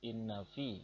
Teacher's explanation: Ya, seperti yang sudah Bapak bacakan tadi bahwa ada kalimat, ada lafaz inna fi, ya ini hukum bahasanya adalah hunah karena di situ ada non syiddah, ada dua non bertemu langsung maka dibaca hunah, mendengung